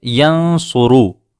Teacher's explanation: را کے اوپر پیش ہے، یہاں ہم را کو پر پڑھیں گے